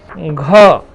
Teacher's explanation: घ जो है वेलर साउंड है और एस्पिरेटेड साउंड है और वॉइस्ड साउंड है। यानी ये कंठस्थ ध्वनि है, महाप्राण ध्वनि है और सघोष ध्वनि है।